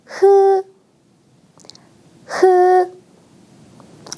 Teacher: 이 자음은 아무것도 막지 않고 바람을 그냥 밖으로 내보내는 소리예요. 여러분의 목구멍에서 나온 바람이 입 밖으로 나가는 소리입니다. · 여러분의 목구멍에서 나온 바람이 입 밖으로 나가는 소리입니다. 여러분의 혀를 입천장과 살짝 가깝게 두고 밖으로 바람을 내보내세요.